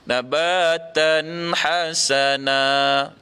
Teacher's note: lcma nun mati bertemu dengan ha non nya ada tanda mati maka tidak boleh didengungkan di situ kena nyata dan jelas tanpa dengung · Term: izhar halqi